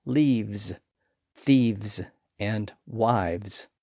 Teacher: that F sound switches to a V sound when those words are made plural,